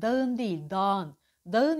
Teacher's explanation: ğ düşer önceki harfi uzatır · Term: ğ kuralı